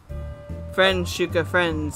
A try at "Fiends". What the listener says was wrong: Fiends. There's no R.